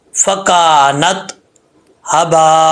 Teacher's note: یہاں پہ مد متصل ہے، تقریباً 3 الف کے برابر اس کو آپ لمبا کر سکتے ہیں